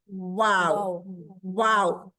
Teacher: वाह नहीं है। वाओ वाओ पहले गोल फिर खुले फिर गोल